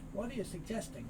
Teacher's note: the t moves over becomes a sort of d